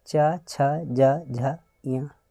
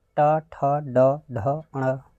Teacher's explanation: च वर्ग का उच्चारण तालु से ट वर्ग का मूर्धा से